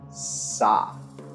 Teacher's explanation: cords ha ha the doorbell is either a voiceless alveolar fricative pronounced with the tip or blade of the tongue against the alveolar ridge just behind the teeth without engaging the vocal cords